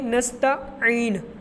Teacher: عین کے آگے جو یا ہے یہ مدہ والا ہے، تو اس لیے ہم عین کو بھی لمبا کریں گے